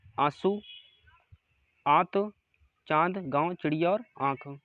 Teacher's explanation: सांस निकाल रही थी लेकिन अगर अनुनासिक की बात करें उच्चारण उच्चारण में नाक से कम सांस निकलते है लेकिन मुंह से अधिक सांस निकलते है